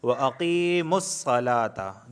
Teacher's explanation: وَأَقِيمُوا الصَّلَاةَ، دیکھیں وَأَقِی یا ساکن سے پہلے زیر آیا ہے قاف کے نیچے، یا مدہ ہے تو اس وجہ سے وَأَقِی کو کھینچ رہا ہوں۔ وَأَقِیمُوا الصَّلَاةَ، لام کے اوپر کھڑا زبر آئے تو صلاۃ۔